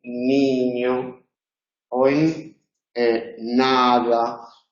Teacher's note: Todos los nasales son sonoros, nasal alveolar. Pero lo pronunciamos en los alveolos solamente en posición inicial de sílaba